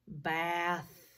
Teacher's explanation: do the straight line so hand over the voice box bath no vibration no buzzing feeling so it's voiceless we do a little straight line to represent that it's voiceless